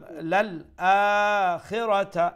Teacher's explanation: আ লম্বা হবে, খিরাতা শর্ট